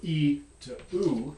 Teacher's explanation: you're going to be gliding along this front-back dimension. You might be able to feel your tongue body moving back.